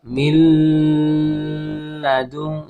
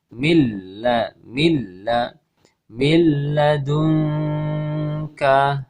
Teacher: suara nun sukun hilang, kemudian lebur, ya, atau masuk atau idgham ke huruf lam tanpa disertai dengan gunnah, tanpa disertai dengan dengungan, ya. Makanya disebut idgham bi la gunnah.